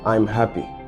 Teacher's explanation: The tone becomes softer, maybe a little bit breathier and subdued. The facial muscles are relaxed. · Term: sad